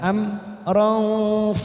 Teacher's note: mim sukun idhar safawi kita baca jelas